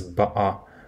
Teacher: In Cockney, another dialect of British English, you pronounce the same word as ba'a with a glottal stop